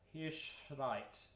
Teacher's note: There's a little bit of a rolled R on that